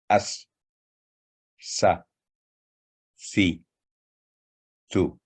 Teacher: آگے ہے سین. زبان کی نوک کو سامنے کے نیچے والے دانتوں کے کناروں سے لگانے سے حرف ادا ہوتا ہے اور ہلکی سیٹی کی آواز پیدا کرتا ہے، اور یہ بھی باریک آواز والا حرف ہے.